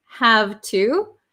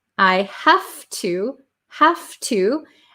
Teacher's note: the v sound changes to an f